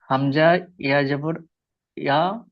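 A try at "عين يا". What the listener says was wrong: হামজা নয়, ভালো করে দেখে পড়েন। আইন ইয়া জাবার ইয়া কেন, আইন ইয়া জাবার। আচ্ছা, ইয়া সাকিনের ডান দিকে জাবার থাকলে কি বলা হয় তাকে? ইয়া সাকিনের ডান দিকে জাবার থাকলে কি বলে? এই যে দেখেন, ইয়া সাকিনের ডান দিকে জাবার থাকলে কি বলে?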